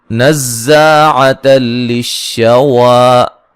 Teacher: نون کو زا سے سختی سے ملائیں گے، زا کو زور سے سختی سے اور سیٹی سے ادا کریں گے